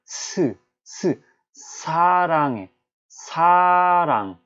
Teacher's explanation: 아까 디귿처럼 잇몸에다가 혀를 대지 않습니다. 아주 미세하게 공기가 요만큼 빠져나갈 만큼의 그 공간을 마련해 두고 공기가 마찰되면서 나와요. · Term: 시옷